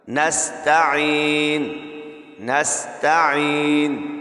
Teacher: نستعین میں سین کو باریک سیٹی کے ساتھ ادا کرنا ہے، اور تا کے اوپر زبر ہے، اس کو کھینچنا نہیں ہے، کیونکہ بڑی حرکات جہاں پہ آئیں اس کو کھینچتے نہیں ہیں، بلکہ منہ اور آواز کو کھول کر ہم زبر کو ادا کریں گے۔